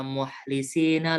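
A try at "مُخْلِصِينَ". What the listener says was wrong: Mukhlisin itu pakai kho ya? Bukan bukan pakai hak, tapi pakai kho-nya. Dia lebih ngorok huruf kho itu. Mukhlisina.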